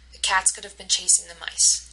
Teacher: notice how cats chase and mice always get the stress